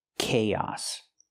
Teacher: We link the two vowels with the y sound like yes and yesterday together.